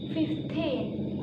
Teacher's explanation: we normally put the stress on the second syllable